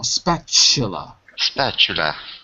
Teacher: sometimes the t is pronounced like CH